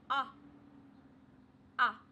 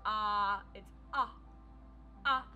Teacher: with ah you want to make sure that your mouth is open wide for ah and you can hear that it's kind of just short it's not a or ah ah so it's